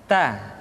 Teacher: huruf ta keluar dengan menyentuhkan ujung lidah kita dengan gusi-gusi gigi seri bagian atas ta kemudian huruf ta ketika diucapkan terdengar ada nafas yang mengalir